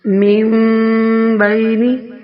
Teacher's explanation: من بینی نون کی آواز سائلنٹ ہو جاتی ہے، چھوٹی میم کی آواز قائم رہتی ہے